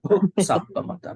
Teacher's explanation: So H was properly pronounced. This is very important, We call it aspirate in Pali.